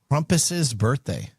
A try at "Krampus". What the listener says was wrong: It's Krampus, not Crumpus.